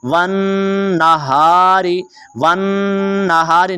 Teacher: नून के ऊपर आपने गुन्ना करना है और थोड़ा सा रुकना है · नून के ऊपर गुन्ना भी करेंगे और वा को नून के साथ मिलाएंगे।